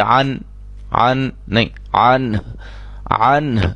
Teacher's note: نون اور ہا کی آواز ہمیں آنی چاہیے، ہا کو ساکن کر کے پڑھیں گے